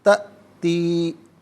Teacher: یوم تأتی، اچھا یہاں پر آپ دیکھیں تا حمزہ پر سکون ہے، حمزہ ساکن ہے، تو حمزہ جب ساکن ہو تو اسے جھٹکے کے ساتھ ادا کیا جاتا ہے، تاتی نہیں، تأتی، اور یہاں یا مدہ ہے تو ایک الف کی مقدار کھینچ کر پڑھا جائے گا